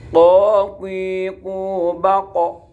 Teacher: Letaknya qaf yaitu di lidah atau di sini ini, di atasnya huruf halqiyah. Qaf nempel pada langit-langit, nempel pada anak lidah.